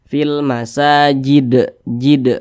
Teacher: Kemudian ini kalau kita berwakaf di huruf dal, maka huruf dalnya kita matikan atau kita sukunkan, sebab huruf dal tidak dibaca panjang. Kemudian huruf dal kita pantulkan karena dia adalah huruf qalqalah. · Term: Qalqalah Kubro, qalqalah kubro